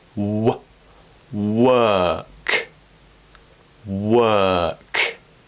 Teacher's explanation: the mouth is relaxed the tongue just floats in the middle of the mouth that's a more relaxed version of it so now try it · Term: long vowel sound